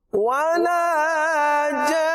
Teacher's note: ولا جان مد ہے اور مد لازم ہے اور اسے زیادہ کھینچنا ہوگا اور آخر میں نون مشدد ہے تو کیا کریں گے نون مشدد پہ غنہ کریں گے تو اس طرح پڑھیں گے ولا جان یہ غنہ ادا ہوگا آخری آیت کریمہ ہے فَبِأَيِّ آلاء ربكما تكذبان فبأي آلاء ربكما تكذبان فبأي آلاء ربكما تكذبان فبأي آلاء ربكما تكذبان صدق الله العظيم صدق الله العظيم کریم آپ کو برکت عطا فرمائے.